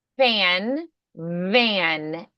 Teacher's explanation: F is unvoiced, V is voiced.